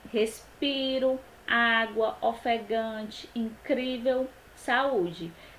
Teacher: Paroxítona, a sílaba tônica é a penúltima.